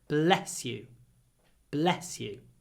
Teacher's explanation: just bless bless you when you say it bless bless bless it's a really short e the E is clipped before the S